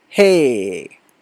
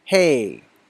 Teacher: When you said hey, you can say the vowel sound for a long time without moving your mouth. Hey. Your mouth doesn't move.